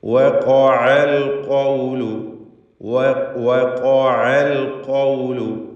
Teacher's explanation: വാവ് 2 ചുണ്ടുകളിൽ നിന്നാണ് ഉച്ചരിക്കുക. ശേഷം ഖാഫ് തഫ്ഖീം ചെയ്ത് ഉച്ചരിക്കേണ്ട, അല്പം കടുപ്പത്തിൽ ഉച്ചരിക്കേണ്ട അക്ഷരമാണ്. ഷിദ്ദത്തിൻ്റെ ഹർഫാണല്ലോ ഖാഫ്.